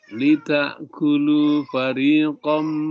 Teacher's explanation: Nah, dia berdengung ditahan. Ya. Karena tanwin masuk ke dalam mim. Ya, ini konnya masuk ke dalam, berubah menjadi fariqam. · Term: idgham bigunna